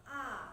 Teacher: vokal rendah atau vokal bawah yang dibentuk apabila rahang bawah diundurkan lagi sejauh-jauhnya